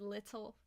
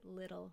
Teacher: talking normally I would say little with a flap T